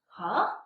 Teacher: Second tone is a rising tone. Rise from level 3 to level 5 pitch. It goes up.